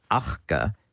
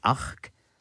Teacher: it loses the schwa at the end of words